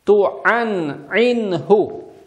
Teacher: буква «ха», она мягкая, на выдохе произносится